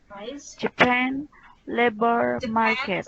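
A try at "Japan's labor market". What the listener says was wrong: Ada S-nya, Japan's good.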